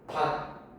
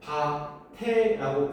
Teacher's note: 조사는 우리 형식 형태소니까 여기에서 밭에라고 그대로 연음이 되는 거야.